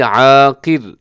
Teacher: قاف موٹا را باریک